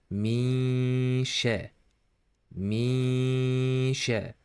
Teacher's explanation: You should hide this noon and blend it to this sheen like this. Mi sha, mi sha. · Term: ikhfa